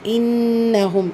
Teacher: நூன் முஷததா இருக்கு குன்னா செஞ்சு ஓதணும்